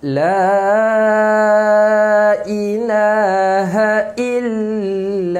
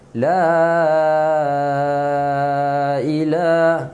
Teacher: la panjang 4 harkat